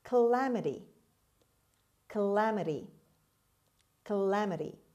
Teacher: seven calamity calamity calamity the first a is pronounced as schwa the stress is on the second syllable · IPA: /kəˈlæməti/, kəˈlæməti